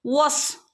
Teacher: സ്വാദിന് സുക്കൂൻ വരുമ്പോൾ ഹഫ് സുക്കൂന് കൊടുത്താൽ മതി ട്ടോ സ്വാദ് കൽക്കലയുടെ ലെറ്റർ അല്ല